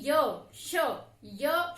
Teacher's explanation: हमारी जीभ आगे ही है तालु के पास। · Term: तालव्य